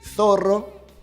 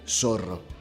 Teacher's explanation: este fenómeno se da el nombre de ceceo para el caso de España y de ceseo para el caso de América Latina